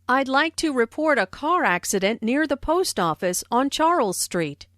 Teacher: notice how the keywords car accident post office and charles street are stressed